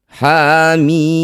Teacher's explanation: Yang ada hanya tanda mad. Baca huruf aslinya mim. Panjangkan enam harakat.